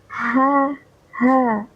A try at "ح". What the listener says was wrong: Yang haknya tidak kurang tipis. Jadi masih sama kayaknya, keluarnya tuh sama hurufnya.